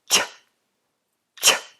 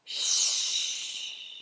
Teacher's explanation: it's a mix between a plosive and a fricative. That means there's a bit of movement and friction, and it's also exploding. So, ch, not sh.